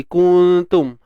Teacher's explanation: Sembunyikan nun di sisi huruf ta. Dan dengung nipis. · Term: ikhfa hakiki